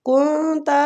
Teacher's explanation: كنت نون پہ اخفا ہو رہا ہے، اخفاء حقیقی